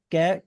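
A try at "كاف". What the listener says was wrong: جی، کیف بھی نہیں اور قاف بھی نہیں.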